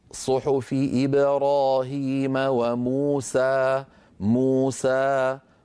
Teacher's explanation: يا أخي هذا ما يصح، هذا العارض للسكون يجب أن يكون بعده حرف ساكن سكونا عارضا بسبب الوقف، هذا ليس بعده شيء. موسى هي مدود طبيعية لا يصح تطويلها عن حركتين